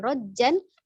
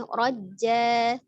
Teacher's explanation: Dia berubah fathah tanwinnya menjadi fathah saja. Dan panjangnya 2 harokat. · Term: mad iwad